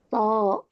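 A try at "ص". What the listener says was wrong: Ee sh ya, bukan th sho.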